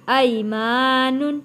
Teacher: یا ساکن سے پہلے زبر ہے، حروف لین ہے، جلدی اور نرمی کے ساتھ ادا کرنا ہے